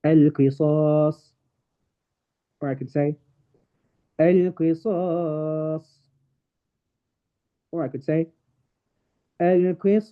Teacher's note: I can either pronounce it with 2, 4, or 6 harakas. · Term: mad arid lis-sukun